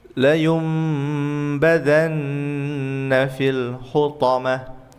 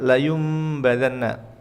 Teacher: iqlab itu adalah merubah nun sukun dan tanwin menjadi mim.